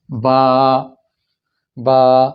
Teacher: زبر کو جب آپ کھینچیں گے، لمبا کریں گے، تو آپ ایک لفظ، ایک حرف اس کے اندر بڑھا دیں گے، وہ ہے الف کا۔ با، تو گویا آپ نے یوں پڑھ دیا، با با، 2 گنا آواز لمبی ہو گئی ہے، با۔ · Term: مد